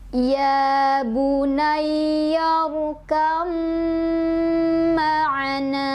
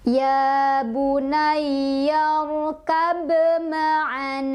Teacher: ketukan karena disini banyaknya bertemu dengan mim itu dia kalau bertasydid punya sifat ghunnah jadi harus ada dengungan nya jadi selain ditahan didengungkan